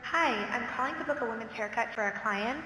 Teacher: it's stated in a way where the intonation goes up at the end so that it sounds like a question. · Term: up speak